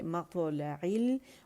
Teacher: اور میم باریک ہے، میم کو موٹا نہیں کریں گے ، مقطع نہیں